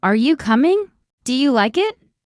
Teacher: In English, our voice usually rises at the end of a yes or no question. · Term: rising tone